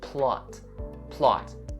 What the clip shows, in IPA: plɑːt